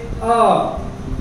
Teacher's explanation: तो इनका उच्चारण स्थान गला होता है, इनकी आवाज गले से निकलती है।